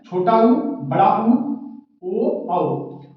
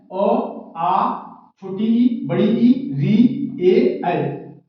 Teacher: जिन स्वर का उच्चारण करते समय हमारे होठ की आकृति वृत्त के आकार हो जाए, वृत्ताकार, तो उसे वृत्ताकार स्वर कहेंगे। और जिन स्वर की उच्चारण करते समय हमारे होठ की आकृति वृत्त का आकार न ले, उसे अवृत्ताकार, यानी ओष्ठाकृति के आधार पर स्वर का विभाजन 2 तरीके से हुआ है, वृत्ताकार और अवृत्ताकार।